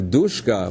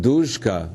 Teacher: with a voiceless S, a sh before k, but duzhka with a voiced zh before k. There's a contrast in that environment before a tense consonant.